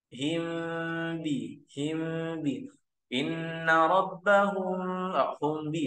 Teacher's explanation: kalau ini memang sudah mim sukun dan bertemu dengan ba kita tinggal menyamarkannya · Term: Ikhfa Syafawi